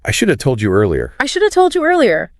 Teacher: The word have simply vanishes from existence. It gets totally absorbed, swallowed up by should, creating shoulda.